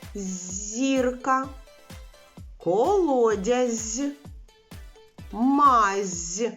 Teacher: цих словах спільний звук з приголосний м'який